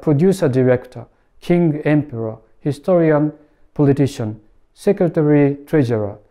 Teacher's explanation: because the words /parent/ and /teacher/ are in a coordinate structure, the compound stress rule gets blocked in this case · As these are coordinate structures, they never take the STRONG-weak pattern; instead, each element retains its respective stress.